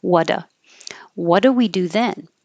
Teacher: So instead of what do, the what duh. So we don't have to make a separate T before the D. So you'll only hear the D, and the oo can change to because it's not stressed.